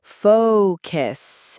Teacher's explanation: with focus, make that O sound super long